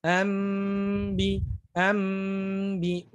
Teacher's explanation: Nah, jadi ketika kita membaca iqlab hati-hati membacanya jangan sampai dengan ya dengung yang terburu-buru. Jadi dibaca dengan dengung yang agak ditahan.